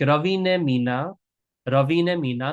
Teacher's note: the word for and, ane, is usually shortened to ne